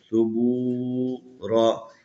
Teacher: واو کو ایک الف کے برابر کھینچنا ہے. ثبورا یہاں وقف کریں گے وہی صورت ہے.